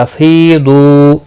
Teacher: ثم میم مشدد پر غنہ ہوگا۔ افیدو فی یا مدہ ہے، دو واو مدہ ہے، ایک ایک الف کے برابر کھینچ کر پڑھیں گے۔